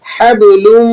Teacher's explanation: با پہ قلقلہ ہوگا، قلقلہ صغیرہ اسے کہا جاتا ہے